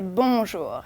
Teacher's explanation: if you want to pronounce it properly, don't say bonjour, don't pronounce the N